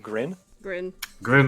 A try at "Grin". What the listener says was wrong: you got to roll the r you're not pronouncing it correctly